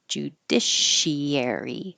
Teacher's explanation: The CI combination will sound like sh. Judiciary. This S will stay a clear S.